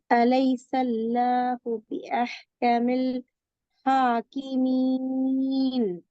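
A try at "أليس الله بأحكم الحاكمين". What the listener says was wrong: அஹ்கமில் என்று நிப்பாடக்கூடாது. அஹ்கமில் ஹாக்கிம் சேர்ந்து வரணும். அஹ்கமில் ஹாக்கிமீன்.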